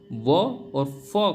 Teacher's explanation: ऊपर के दांत और नीचे वाला होठ मिलाकर व और फ का उच्चारण होता है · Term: दंत ओष